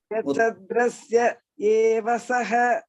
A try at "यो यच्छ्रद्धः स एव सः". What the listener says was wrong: Not isya, issa only. Issa.